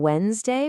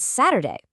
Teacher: the stress is almost always on that first syllable. You can really hear it in Wednesday, where that D is silent, and Saturday.